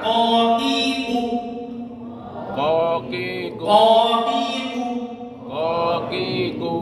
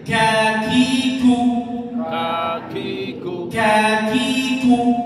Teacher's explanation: Kaf harus ada anginnya.